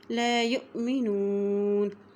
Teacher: حمزہ کے اوپر جزم آ گئی اس لیے یہاں پہ جھٹکا دے کے پڑھیں گے